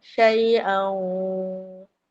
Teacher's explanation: Idham. Maal ghunnah. Masuk bersama dengung dua harakat. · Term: idgham maal ghunnah